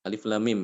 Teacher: mim sukun ini di idghamkan ke mim berikutnya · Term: idgham mimi